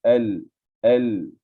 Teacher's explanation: Jadi al, bukan all. Lidah kita jangan terlalu ke langit dalam. Lidah kita berhampiran gigi tu. Tak kena gigi tapi dia berhampiran. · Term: lam sukun